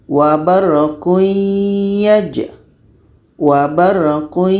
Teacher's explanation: tanwin bertemu ya hukumnya idamunah tapi secara proses bacanya ini tanwin bunyi tanwin masuk kepada ya Jadi ya ini membawa bunyi dengung daripada tanwin maka di sini disebut dengan Idgham naqis kita baca warquaj wabarquaj